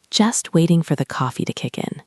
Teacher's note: Notice how I link the words waiting for, waiting for, and kick in. Kick in. Try to say it smoothly.